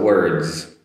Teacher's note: D and S together comes across as a Z sound